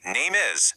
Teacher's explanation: Connect your words naturally. Say name is instead of pausing awkwardly in between the two words.